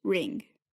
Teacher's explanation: Then comes N, as in Japanese is ring, or in English, ring. This is an N produced with the back of your tongue instead of with the front.